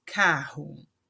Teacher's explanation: quando uma palavra começa com R, eh, vai ter o som forte, o mesmo som do J do espanhol · quando eu tenho encontro dos RS, eh, eu vou ter esse som do J do espanhol